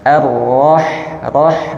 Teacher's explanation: getarannya tidak perlu terlalu banyak cukup dua atau tiga getaran · dialirkan h-nya roh supaya dia tertunaikan dengan jelas